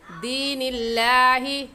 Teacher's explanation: دین اللہ میں لفظ اللہ سے پہلے والے لفظ کے نیچے دیکھا زیر آ گئی تو یہ لفظ اللہ باریک پڑھیں گے۔ باریک کرنے کا طریقہ آپ کے ہونٹ پھیل جائیں